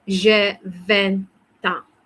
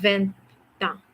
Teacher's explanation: there's a liaison sound because the consonant T is meeting, okay, the vowel A.